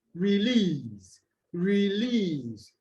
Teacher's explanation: as two syllables would take the stress on the second syllable